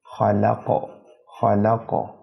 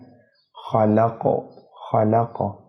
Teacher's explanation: قاف پر وقف کریں گے، زبر ہٹ جائے گا، جزم آ جائے گا، وقف کے دوران جب جزم آئے گا تو قاف کو قلقلہ کریں گے، ہلا کے پڑھیں گے۔